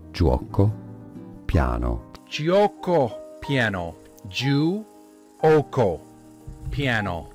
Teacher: you have a j sound but quite a short u sound